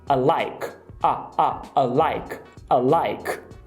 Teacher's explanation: o que poucas pessoas sabem é que a palavra I, que significa eu, pode ser reduzida para a